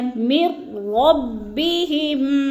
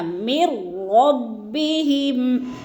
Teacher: اسی طرح آپ کے ساتھ بغیر غنہ کی دوسری مثال یہ ہے، من ربہم، میم کو را کے ساتھ ملا کر ہم نے ادغام کرنا ہے یعنی بغیر غنہ کے، غنہ نہیں کرنا، من ربہم۔